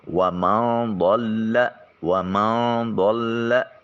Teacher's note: نون ساکن کے بعد ضاد حرف مستعلیہ بھی ہے اور حرف اخفا بھی ہے، لہٰذا نون کو اپنے مخرج میں چھپا کر ادا کریں گے اور ضاد کی آواز کو موٹا اور پر کر کے نکالیں گے